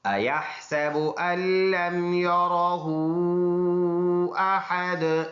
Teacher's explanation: اور مد بھی ہے، احد وقف کریں گے دونوں پیش سائلنٹ، دال جب سکون والا ہو جائے گا تو اس میں قلقلہ ہوگا